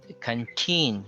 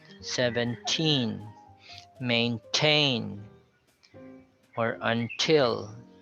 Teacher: you cannot obscure the t there because they were stressed syllables